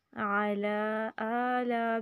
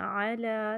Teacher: صرف لام کو لمبا کرنا ہے، عین کو لمبا نہیں کرنا